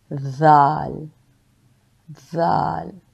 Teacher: ذال ادا کرتے ہوئے آپ کی زبان کی نوک اوپر والے دو دانتوں کے درمیان آتی ہے